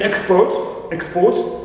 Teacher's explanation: first syllable is stress in export